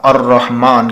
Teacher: جب ہم عبدال کا جو لفظ ہے اس کو ختم کر دیتے ہیں، الرحمن اگر پڑھتے ہیں ہم تو اب ہم نے الف کو تو پڑھا، لام کو نہیں پڑھا، بلکہ الف کو را کے ساتھ ملا کر پڑھا، الرحمن کر کے ہم نے پڑھا۔ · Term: حروف شمسی